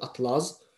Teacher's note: Atlas z-dan olanda vurğu ikincidə düşür.